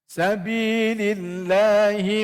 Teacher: Allah tu baca dengan nipislah